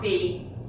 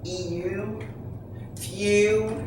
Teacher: the EW in few is considered a diphthong because you hear 2 sounds blended together